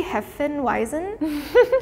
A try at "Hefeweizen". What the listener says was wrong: I mean, it's close. It's just, it sounded cute, like the accent. Yeah, we say Hefeweizen. Weizen. Yeah, like the tss, that sound is like tss. Yeah, it's not like a English z. It's more like tss. Hefeweizen.